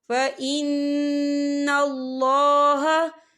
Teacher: وَاتَّقَى فَإِنَّ اللَّهَ، فَإِنَّ اللَّهَ، اللہ کا نام پر پڑھا جائے گا، کیونکہ اللہ کے نام سے پہلے زبر ہے، اور یہاں نون مشدد ہے، تو یہاں پر غنہ بھی ہوگا